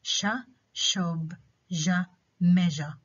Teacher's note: the tongue is close to the back part of the alveolar ridge, and the front part of the tongue is raised towards the hard palate, and this creates a narrow gap through which the air flows or leaves. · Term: palate alveolar fricatives